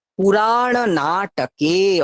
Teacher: রায়ে আকার আছে, সেই দীর্ঘটা আমাকে আনতে হবে, প্লাস মূর্ধন্য ণ আছে, ওটা স্পষ্ট করাতে হবে, আর দীর্ঘগুলোকে টানতে হবে। · অনেকে কে বলে ছেড়ে দেয়, কে, না, কে একারটা টান হবে।